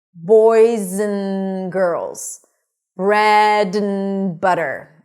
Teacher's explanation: So we generally don't say 'and', we just say n/ən. So we turn the a into a schwa - ə, and the 'd', just eliminate, we don't really need it.